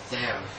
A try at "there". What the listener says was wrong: In that part, TH is a bit hard. It sounds like a D, there. But instead of saying, instead of the tongue being inside there, it is outside there.